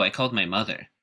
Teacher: i called my mother uh can be pronounced with mother or the first syllable in mother being the stressed syllable and that's more of a neutral response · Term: neutral focus word placement